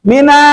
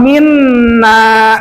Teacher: Nun musadah itu dua harokat, minna. Gitu.